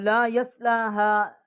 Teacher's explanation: और ला यस्लाहा, लाम को हमने एक अलिफ जितना खींचा है, और हा जो है इसको हमने तीन से चार अलिफ जितना इसकी आवाज़ जो है वो बुलंद की है। और यहाँ पर हमज़ा को हमने लाम के साथ मुशद्दद किया है, इसको तशदीद दिया है।